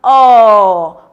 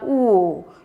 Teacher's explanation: My mouth is more open in O than in the pronunciation of the sound oo. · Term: open position